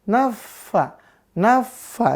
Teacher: Fa Ya ketika dia ditasdidkan disukunkan ya maka harus keluar hamesnya udah ya harus berhembus naffa naffa ya di situ ada tuh